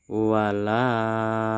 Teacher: Walah ini harus kita panjang kan nak lima harakat karena ini merupakan Mad Jaiz munfasil